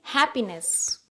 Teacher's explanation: हैप्पीनेस, है पे stress दिया गया है, इसलिए इसको बोलेंगे हैप्पीनेस।